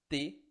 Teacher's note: pode perceber que a língua vai direto no dente, T, e depois, quando ela solta o dente, é que faz o som, como se fosse um sei lá, um estalo, né, T. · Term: dental